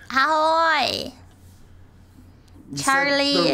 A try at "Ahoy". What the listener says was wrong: The right letters, but in the wrong order. You said ha-oy. You said ha-oy instead of ahoy.